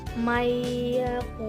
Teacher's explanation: Contoh hukum bacaan idgham bi gunnah pada Al-Quran yaitu pada bacaan mayyaqulu. Jadi ada nun mati bertemu dengan huruf ya dibaca dengan mendengung.